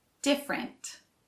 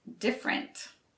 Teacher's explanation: you don't actually pronounce all three syllables different you just pronounce the first and last one